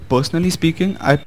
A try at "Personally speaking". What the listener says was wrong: Okay, personally, the P needs to have more air. You're not pronouncing that with enough air.